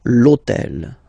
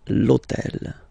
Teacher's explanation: in French we don't pronounce H, okay, so basically the first sound of the word is the vowel O